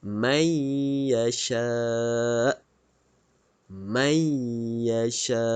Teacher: huruf nun ini dimasukkan dalam huruf ya oke dan didengungkan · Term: idgham maal ghunnah